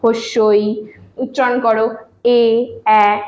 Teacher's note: আমাদের প্রসারিত স্বরধ্বনির মধ্যে পড়ছে, কারণ এগুলো উচ্চারণ করতে গিয়ে আমাদের ঠোঁটটা কিন্তু অনেকটা প্রসারিত হয়ে যাচ্ছে